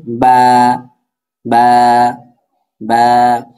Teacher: বাটা হচ্ছে দুই ঠোঁটের ভিজা অংশ থেকে, অর্থাৎ আমাদের দুইটা ঠোঁট স্বাভাবিকভাবে যার যেমন থাকে সেইভাবেই, বা, বা, বা।